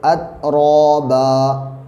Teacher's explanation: را کے اوپر زبر یا پیش ہو تو را پر ہوتا ہے، تو یہاں پہ را کے اوپر زبر ہے اس لیے را کو موٹا پڑھیں گے